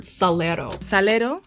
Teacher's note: This R is made with a flap of the tongue on the ridge behind the front teeth. That's not too far away from where the L is pronounced.